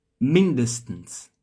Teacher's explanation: a sílaba tônica tá no início, tá?